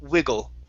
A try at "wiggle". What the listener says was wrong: Almost. You're saying we. Instead of e, it's wiggle. So that one you drop down to a short e, saying wiggle.